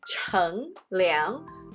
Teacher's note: cooling off during a hot day is called chang liang both are second tones